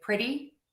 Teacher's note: it's a fast D sound, super quick D sound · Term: flap T